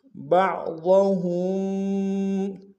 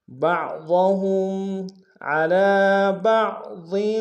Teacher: بما فضل اللہ بعضهم، با کو عین کے سامنے لانا، عین کو گہرائی سے ادا کریں گے، ضاد کو موٹا ادا کریں گے، ہا کو میم ساکن کے سامنے لانا، میم ساکن میں غنہ کریں گے۔